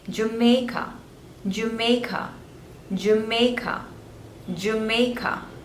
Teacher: three syllables Joe May and Ka the stress is on the second one